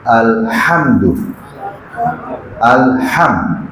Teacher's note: ہا جو ہے حلق والی ہا، یہ حلق کے درمیان سے